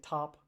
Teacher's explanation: So, for example, the T in top, like the air is stopped at my tongue when I say top, and then it suddenly gets all released. That's a plosive.